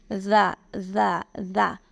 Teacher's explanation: ذال کو ہمیشہ نرمی کے ساتھ، ذال کو ہمیشہ نرمی کے ساتھ. ذال بولتے ہوئے آپ کے جو دانت ہیں نا، ان کے سرے کے ساتھ زبان کی نوک لگنی چاہیے.